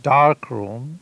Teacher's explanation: The word dark room, it starts with a D sound, and D is a plosive